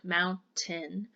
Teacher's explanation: a glottal stop if you're doing running speech means that you really shorten that vowel and you kind of skip over it